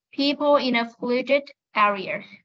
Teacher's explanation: những cái âm cuối là ed, trước nó là phụ âm t hoặc là d thì mình phải bật âm it lên